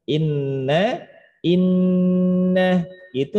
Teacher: Nun tasydid itu sempurna dengungnya tahan lama